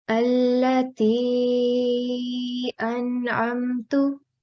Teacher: we need to prolong the T with about 3 to 5 seconds long. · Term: Maddul Munfasil